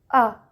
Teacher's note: اس کا مخرج بھی اقصی حلق ہی ہے، ہا والا ہی، لیکن یہ سخت اور باریک حرف ہے۔ جب تک اس کو سختی سے نہ پڑھا جائے جیسے آ، تو اس کی ادائیگی صحیح نہیں ہوتی۔ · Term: حمزہ